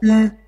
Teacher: Et la voyelle, c'est pas OU, comme dans l'exemple précédent, parce que vous voyez que dans l'exemple précédent, le OU, ça se prononce OU. Là, ça se prononce U. Donc, c'est labialisé comme en français.